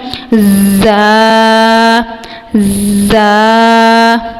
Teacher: یہ حروف صفیریہ میں سے ہے، اس کی ہم نے سیٹی کی آواز نکالتے ہوئے ادا کرنا ہے، جیسے اس طرح کی ہم نے سیٹی کی آواز نکالتے ہوئے اس لفظ کی ادائیگی کرنی ہے۔